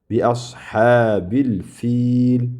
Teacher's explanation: o'rtada mana ya bor, harakatsiz ya. Bu mad bu. Cho'zamiz.